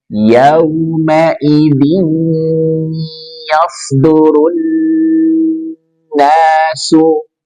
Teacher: Yauma idzin masukkan ke rongga hidung, khaysyum. Ada dengung. · Maka hukumnya idgham bi gunnah. Idgham dia melebur ke huruf berikutnya dan ada gunnah, dengung. Maka yauma idzin masuk ke rongga hidung.